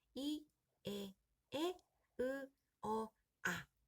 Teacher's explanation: 입술이 평평하게, 즉 오므려지지 않는 모음을 평순 모음이라고 합니다.